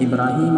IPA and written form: ʔɪbraːˈhiːm (ʾIbrāhīm)